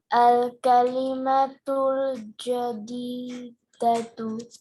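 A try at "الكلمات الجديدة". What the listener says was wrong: Good.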